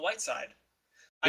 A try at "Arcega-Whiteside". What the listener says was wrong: Arcega, it's Arcega Whiteside. It's not C. It's pronounced as TH instead of C. It should be Arcega Whiteside.